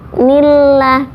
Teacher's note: nillah ini dibacanya tarkik atau tipis karena sebelum lafaz Allah ada huruf berharokat kasroh. Jadi nillah, tidak nilloh tapi tipis.